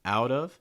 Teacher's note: out of you notice that linking with the fast d sounds like out of